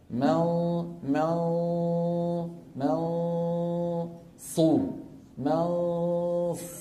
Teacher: ولسان المزمار بيرجع لورا شوي، فيحدث في الحلق تضيق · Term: الصاد